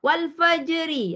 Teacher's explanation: kalau kita menyebut walfajri memang ro tarqik nipis